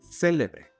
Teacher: If we stress the initial syllable, célebre, then it means something or someone that is famous.